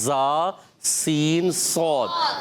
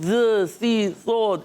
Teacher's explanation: سین سیٹی کے ساتھ ادا ہوتا ہے. زا سین صاد، ان کو حروف اصلیہ کہتے ہیں مخرج کے لحاظ سے، حروف اصلیہ، اور صفت کے لحاظ سے حروف صفیریہ.